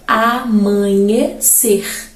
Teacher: Uma palavra oxítona, segundo o exemplo aqui mesmo da nossa gramática, é amanhecer. Em amanhecer, o ser é a sílaba tônica, logo a palavra é uma oxítona, última sílaba tônica.